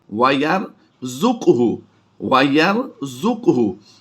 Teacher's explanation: यहाँ पर काफ को हमने साकिन करके पढ़ना है, काफ को पुर भी करेंगे और कलकला भी कर देंगे। वयरज़ुक़हु मिन हैसु ला यहतसिब, इस तरह से यहाँ पर पढ़ेंगे इसको।